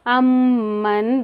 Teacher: इसको गुन्ना करेंगे 2 से 3 हरकत तक। मीम पर तशदीद और नून पर अगर तशदीद हो तो यहाँ पर गुन्ना करेंगे। ये अल-ख़श्यूम में आता है।